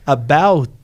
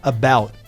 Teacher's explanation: você vai só tocar a língua onde que tem o ponto de articulação, mas você não precisa explodir esse som · O T ele ele foi iniciado, mas você não termina.